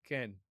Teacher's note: a little shorter than English's long E vowel, like in obey